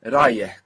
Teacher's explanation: it has this H that we have in English, like in Harry, but in Rayeh, it's on the end